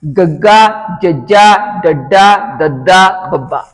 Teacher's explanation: ਇਹਨਾਂ ਨੂੰ ਉਚਾਰਨ ਕਰਨ ਲੱਗੇ ਸਾਡੇ ਸੁਰਤੰਦਾਂ ਦੇ ਵਿੱਚ ਜਿਹੜੀ ਉਹ ਕੰਬਾਹਟ ਪੈਦਾ ਹੁੰਦੀ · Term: ਨਾਦੀ ਧੁਨੀਆਂ